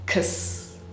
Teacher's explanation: schwa, which is the vowel sound that we make when it almost kind of sounds like we remove the vowel entirely. So imagine that we go directly from k to s with a little bit of a vowel in there.